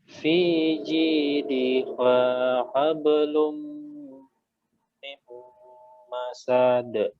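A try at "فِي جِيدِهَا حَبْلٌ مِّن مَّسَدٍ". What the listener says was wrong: Masad. Sa-nya nggak panjang. Kemudian fi jidiha ha. Ada ha. Fi jidiha hablum min masad.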